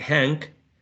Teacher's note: when you are saying hank, the tongue, the back of the tongue is raising a bit towards the velum area